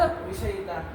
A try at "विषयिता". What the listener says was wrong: ध्यान से बोलो, साफ साफ सुनाई देना चाहिए कि क्या कहना चाह रहे हो। यह में थोड़ा जो इकार ध्यान से जोड़ो, विषयिता संबंध। धीरे धीरे बोलो लेकिन साफ बोलो।